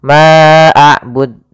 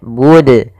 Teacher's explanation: Ma'abud, ini nambahkan hamzah. Harusnya tidak boleh ditambahkan hamzah, tetap dijelaskan qalqalahnya.